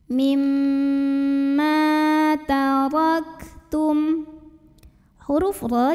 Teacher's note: cara bacanya dipanjangkan mimnya 2 harokat